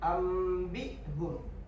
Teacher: Nun mati atau tanwin yang bertemu huruf ba dibaca berubah menjadi bunyi mim disertai de dengung. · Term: iqlab